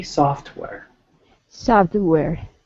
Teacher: I didn't hear the T